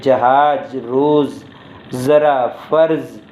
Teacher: ज ध्वनि के उच्चारण में जीभ का अगला भाग मसूड़े को धीरे से छूता है और वायु धीरे धीरे बाहर निकलती है